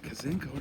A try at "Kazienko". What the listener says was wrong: You're missing a vowel. Kazienko.